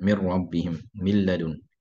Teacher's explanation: So for hafs, you're going to have the lam and the ra without ghunna